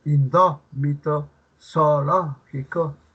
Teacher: Es una palabra esdrújula que presenta la mayor fuerza de voz en la antepenúltima sílaba.